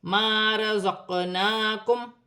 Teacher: الف مدہ بن رہی ہے، قاف ساکن ہے، حروف قلقلہ میں سے ہے، قلقلہ کے ساتھ ادا کیا جائے گا